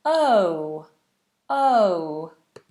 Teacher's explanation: two vowel sounds brought together to make one moving vowel sound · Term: diphthong